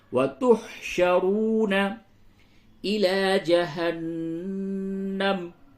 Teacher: نون مشدد ہے غنہ ہوگا